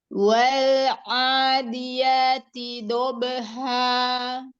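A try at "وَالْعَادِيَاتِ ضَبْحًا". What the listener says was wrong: Wanya jangan memanjangkan harokat pada wawnya. Wal adiyati dobha. Angkat pangkal lidah, huruf qad, isti'la, itbaq. A-nya sempurnakan dulu, madhobi'inya. Wal adiyati dobha.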